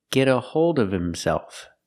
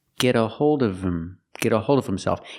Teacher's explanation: you don't hear the H in himself